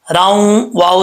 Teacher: अगर वाव के ऊपर शद ना भी आता तब भी हमने रा को वाव से कनेक्ट करना ही था